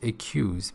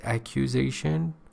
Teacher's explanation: The verb form is accuse with the schwa, but here it is accusation with full a.